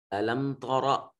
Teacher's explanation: میم کے بعد میم ساکن اور اس کے بعد نہ با ہے نہ میم ہے، لہٰذا میم کو ظاہر کر کے پڑھیں گے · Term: اظہار